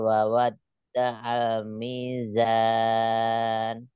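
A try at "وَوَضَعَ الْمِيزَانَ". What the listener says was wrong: Wawanya jangan terjeda. Wawa doa.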